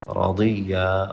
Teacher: را موٹا اور ضاد موٹا